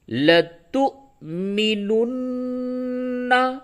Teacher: نون مشدد ہے اس جگہ پہ غنہ کریں گے